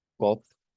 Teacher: Kopf, No se nos olvide que la F es una consonante que se hace labiodental y el sonido o sea, es un soplo bastante fuerte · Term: el soplido de la F